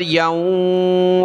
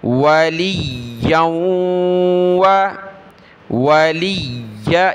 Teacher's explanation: لام کو یا کے ساتھ پھر یا کو واو کے ساتھ ملا کر ناک میں آواز پیدا کرنی ہے. واو زبر و، لام یا زیر لی، لام کو یا کے ساتھ ملایا پھر آگے یا کو واو کے ساتھ.